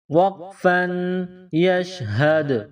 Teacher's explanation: وقف کی صورت میں آخر والے حرف کو سائلنٹ کریں گے، تو آخر میں دال ہے، دال کو جب سائلنٹ کریں گے، دال پر جب جزم کا نشان آئے گا، دال پر سکون آئے گا تو اس پر قلقلہ کیا جائے گا